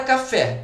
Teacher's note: É evidente que a sílaba tônica é o fé